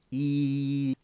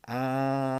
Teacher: And then the tongue moves in between these positions here. So E, for example, is a high vowel, and A is a low vowel.